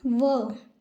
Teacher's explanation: व, जिसे बोलने के लिए दंत और ओष्ठ यानी कि दांत और होठ दोनों की आवश्यकता पड़ती है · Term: दंत ओष्ठ